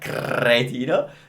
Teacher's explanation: she used as much R, rolled R that she can